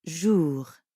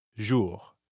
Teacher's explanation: the R at the end of jour doesn't really sound like an English R. You should feel that R in your throat. Jour. Yeah, almost like you're gargling or clearing your throat.